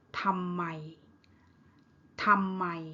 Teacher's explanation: ทำ mid tone ไม mid tone